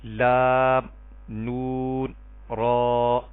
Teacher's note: زبان کا کنارہ اوپر والے دونوں دانتوں کے مسوڑوں سے جب لگے گا تب یہ تینوں حروف ادا ہوں گے اور ان تینوں حروف کو طرفیہ کہتے ہیں.